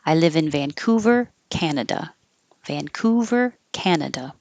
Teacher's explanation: what you would do in writing with a little comma to separate the city and the country you should do with a tiny little pause to help people also make that separation I live in Vancouver